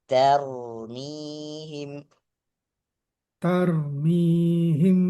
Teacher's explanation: ada huruf tipis ada huruf tebal ta huruf tipis ro huruf tebal